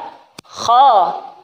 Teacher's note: kha itu dari ujung tenggorokan, gha juga tenggorokan, ujung tenggorokan. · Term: huruf isti'la